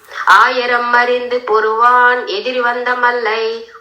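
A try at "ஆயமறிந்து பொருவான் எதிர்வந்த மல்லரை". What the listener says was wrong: ஆயிரம் அல்ல ஆயமறிந்து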